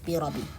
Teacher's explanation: not pronouncing the shadda on the ba, saying it as a kasra only